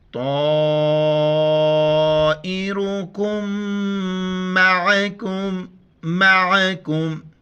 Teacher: قالوا طائركم، را کے اوپر پیش ہے موٹا کر کے پڑھیں گے. کاف کو میم کے ساتھ ملاتے وقت غنہ کریں گے، میم کے اوپر شد ہے